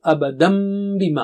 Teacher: اور یہی بات تنوین کے لیے بھی ہے، جیسے ابدن ہے، ابدن کے بعد بی آ رہا ہے، ابدن جیسے بی کے لیے ہونٹ ملائیں گے تو وہی میم کی آواز آ رہی ہے